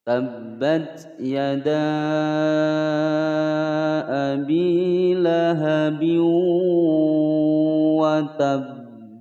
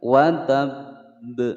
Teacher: ditahan terlebih dahulu kemudian baru dipantulkan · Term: qalqalah akbar